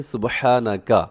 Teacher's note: اس میں کیا ہوتا ہے کہ کاف کو باریک رکھنا ہے اپنے